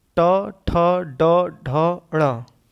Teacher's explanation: उसके बाद ट वर्ग आपका है, जो मूर्धा से बोला जाता है। ट, ठ, ड, ढ, ण ये आपका मूर्धा से बोला जाता है।